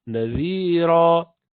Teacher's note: The tip of the tongue touching the incisor tip.